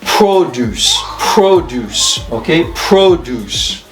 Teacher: when it's a noun, the stress is on the first syllable.